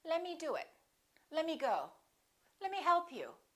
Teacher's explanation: let me often becomes lemmy the t disappears let me do it let me go let me help you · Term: casual speech